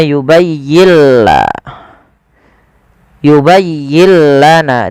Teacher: Idghamnya gimana sih? Idghamnya adalah nun sukunnya diidghamkan ke huruf lam. Maka yubayyilla. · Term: idgham bila gunnah